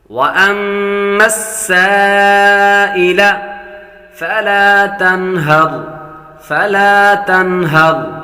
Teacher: तनहर यहाँ पर गुना नहीं करेंगे, नून साकिन के बाद हा हुरूफ हल्के में से आ रहा है।